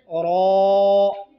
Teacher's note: ज़ुबान का किनारा मा पुश्त, पुश्त के माने ज़ुबान की पिछली हिस्से, मा पुश्त और ऊपर के चार दांतों के मसूड़ों पर लगाने से रो अदा होते हैं।